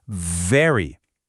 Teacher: For the V sound, you need a little bit of friction. Your top teeth gently touch your bottom lip and you make a buzzing sound. Feel that vibration.